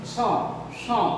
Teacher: ঠিক আছে, আর এটা মূর্ধন্য স, স স, মানে একটু নাকে আনুনাসিক আসছে এই সটাতে, তার জন্য এটাকে বলা হয় মূর্ধন্য স। মূর্ধা থেকে উৎপন্ন হচ্ছে, মূর্ধা থেকে উচ্চারিত হচ্ছে, তার জন্য এই সটাকে বলা হয় মূর্ধন্য স।